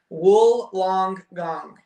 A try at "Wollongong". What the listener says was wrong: No, you added a gung. gong. Yeah, instead of gong.